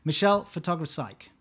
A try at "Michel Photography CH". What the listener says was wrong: I think it's not psych because there's no PS. CH is the country code for Switzerland.